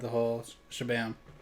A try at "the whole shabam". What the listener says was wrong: The whole shabam. pluralized whole. You didn't say the whole shabam, you said the holes shabam.